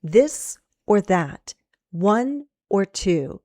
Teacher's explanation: We're joining ideas with or and then we go up and then down.